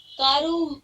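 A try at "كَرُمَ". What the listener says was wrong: کرو ماں. کارو نہیں. کارو نہیں. کرو.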